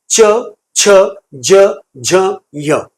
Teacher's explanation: टाळ्याला जीभ चिटकून टाळ्याच्या दिशेने जीभ चे शब्द निर्माण केले जातात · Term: तालव्य शब्द